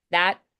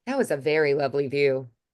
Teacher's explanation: I don't really say the T, I just kind of close at the end.